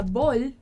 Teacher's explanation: um bol, a gente fala bol, lembra do som do L, né? No final, igual do N. Então, a gente mantém a língua presa lá em cima.